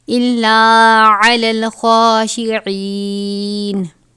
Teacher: خا کو ہمیشہ اور ہر حالت میں پر ادا کیا جاتا ہے